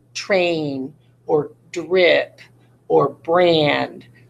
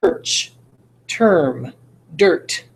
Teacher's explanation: the vowel is basically taken out there's absolutely no vowel sound and that's because the r is controlling it so much